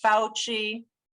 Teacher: the stressed syllable is that ow in the first part of his name it sounds like brown cow and we have dr collins who's